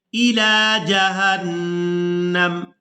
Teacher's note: वक़फ़ करेंगे तो वक़फ़ की सूरत में मीम को साकिन कर देंगे, नून को मीम साकिन के साथ मिलाकर अदा करेंगे